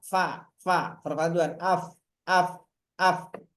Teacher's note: antara ujung gigi sori atas dan bibir bawah